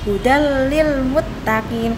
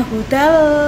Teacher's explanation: harus dimasukkan langsung tanpa dengung